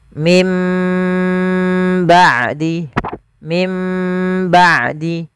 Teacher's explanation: kita mengambil yang idbak saja tidak dengan furjah yaitu bibir kita rapat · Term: iqlab